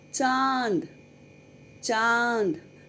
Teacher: अनुनासिक का उच्चारण नाक और मुंह या गले द्वारा किया जाता है।